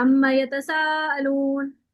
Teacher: یہاں اما پہ 2 حرکات کا غنہ ہے